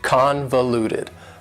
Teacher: convoluted also has four syllables and the stress is on the first syllable convoluted that second syllable again has that schwa sound that reduced